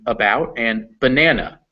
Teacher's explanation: when it's unstressed or at the end of the word it's pronounced like a schwa